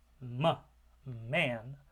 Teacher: The first sound in man is the bilabial nasal because there's a closure with both of the lips, but an opening at the back of the throat, allowing air to pass through the nasal cavity out through the nostrils, so you have continuous airflow through the nose, a nasal consonant.